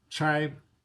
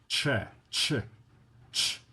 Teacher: Ch is unvoiced. Okay. Because there's no there's no vibration of the vocal cords. It's just air getting passed through a configuration in the mouth.